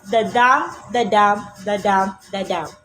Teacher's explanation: When we say the iamb in iambic pentameter, it is a rhythmic unit called the foot, consisting one unstressed syllables and one stressed syllables. And when we say pentameter, it means the iamb is repeat 5 times to get the rhythm of iambic pentameter.